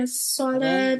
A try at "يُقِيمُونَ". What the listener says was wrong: यकी कहाँ से आ गई? युकी यहाँ पर पेश है. युकी.